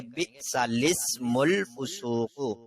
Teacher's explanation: لسم لام کے نیچے زیر پڑھیں گے اور سین سے ملا دیں گے